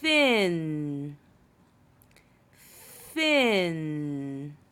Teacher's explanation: you have to blow a little harder and say tongue between your teeth